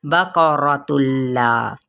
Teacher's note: قوف کو پر اور را کو پر پڑھنا ہے